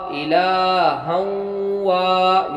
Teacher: یہاں پر دو زبر کی تنوین بعد واو آیا، ادغام بالغنہ ہوا، غنہ کے ساتھ پڑھیں گے اور وا میں الف مدہ ہوا، ایک الف کے برابر کھینچ کے پڑھیں گے.